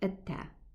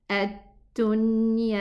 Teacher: I give it some air, some whispering sound.